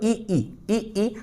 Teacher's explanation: अब इस कंठ से आ, फिर इसके बाद जैसे ही आपने बोला दोस्तों ई, तो ई में आपकी जीभ कहाँ जा रही है, आपकी जीभ दोस्तों ऊपर की ओर जा रही है